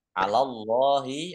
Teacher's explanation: Allahnya dibaca tebal karena harakat di depannya fathah